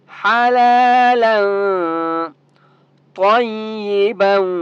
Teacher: طوا مستعلیہ میں سے ہے، طوا کو موٹا پڑھیں گے · تو یہاں پر آپ نے اخفا کرنا ہے کیونکہ طوا بھی حروف اخفا میں سے ہے ، جو 15 حروف ہے نا اس میں طوا بھی ہے،